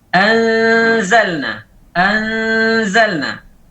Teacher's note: Kita mengangkat lidah, menggerakkan lidah pada posisi zai. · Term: ikhfa